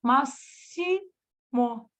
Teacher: em máximo, você ouve o S do X, o sibilar do X, e você ouve o I, máximo. Ansioso, você não ouviu o N de navio, de não.